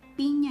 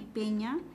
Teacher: la vocal I es una vocal anterior alta y la vocal E es una vocal anterior media. Entonces, el rasgo que tienen en común estas dos vocales viene a ser la anterioridad.